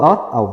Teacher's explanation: तो हमने शुरू बताया है उदयतो कंठोष्ठ, उदयतो कंठोष्ठ, ठीक है, कंठोष्ठ, कंठ और ओष्ठ दोनों से होता है इसका उच्चारण, ठीक है। ओ का मतलब ओ और औ दोनों का उच्चारण स्थान जो होता है कंठ और ओष्ठ से होता है